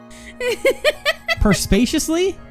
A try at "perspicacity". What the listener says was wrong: There's no L. Perspicacity, I think? perspicacity, something like that.